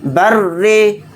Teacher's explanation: رائے مشددہ کے نیچے زیر ہے تو رائے مشددہ کو باریک پڑھیں گے